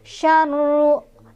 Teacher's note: ro-nya dibaca secara tafkhim karena ro-nya barisnya di atas atau dhammah.